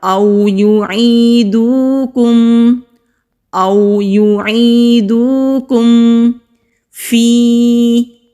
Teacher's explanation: یا ساکن سے پہلے زیر ہے تو یائے مدہ ہے، 1 الف کے برابر کھینچ کر پڑھیں گے۔ ملتہم، میم کے نیچے زیر ہے، لام کے اوپر تشدید ہے، مضبوطی کے ساتھ ادا کریں گے۔